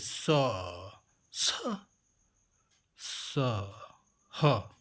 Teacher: जिन व्यंजनों का उच्चारण करते समय हवा मुह में टकराकर उष्म गर्मी पैदा करती हो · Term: उष्म व्यंजन